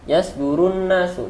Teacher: Di situ ada alif lam tapi tidak terbaca karena dia termasuk ke dalam kategori alif lam syamsiah.